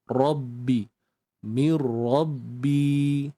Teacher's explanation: Rabbi Bi mad asli dua harakat ya sambut ba bersabdu tu baik-baik Mir kemudian daripada tu sambut